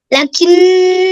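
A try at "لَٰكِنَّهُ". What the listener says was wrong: লা কিন্না কেন বলো এটা লা কিন্না লা টানতে হবে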